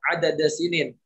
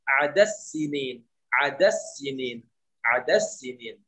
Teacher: Huruf dal masuk kepada huruf sin. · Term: idgham kabir